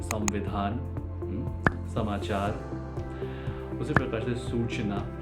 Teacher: हमारे ऊपर के जो दांत हैं, उससे जीभ को पूर्णतया ना सटाते हुए जो हम निकालते हैं, स का उच्चारण करते हैं, वो कहलाता है दंती स।